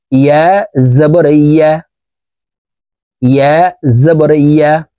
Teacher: ইয়ার উচ্চারণ মখরাজ অনুযায়ী জিহ্বার মধ্যখান থেকে পড়তে হবে।